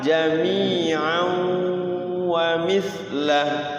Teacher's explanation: Tanwin bertemu waw, bertemu ya, bertemu nun, bertemu mim. Namanya idgham bigunna. Masuk ke dalam waw tanwinnya. Jami'au sambil ditahan.